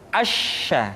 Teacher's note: dikeluarkan dengan cara mengangkat Tengah lidah kita ke langit-langit